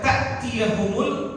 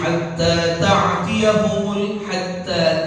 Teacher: Kadang-kadang mereka membaca ta'tiyahumul, mereka mengganti hamzahnya itu, hamzah yang sukun dengan apa? Dengan ain.